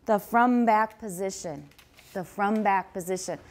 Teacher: there is a stop at the end of front